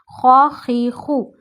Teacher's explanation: خو ہے ہمیشہ موٹا پڑا جاتا ہے، گلے کا پہلا حصہ یوز کریے